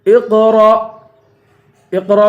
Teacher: اقرأ پہ قلقلہ کریں گے اور را کو حمزے سے ملا کر حمزہ پر جھٹکا دیں گے